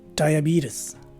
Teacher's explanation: In the first variation, the letter E is a long E, and the letter S takes a Z sound as in zebra, whereas in the second variation, the letter E takes a schwa sound, and the letter S is a regular S sound